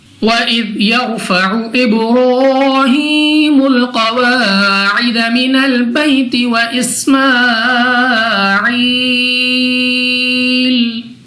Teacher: را ساکن سے پہلے زبر، تو را کو پر یعنی موٹا پڑا جائے گا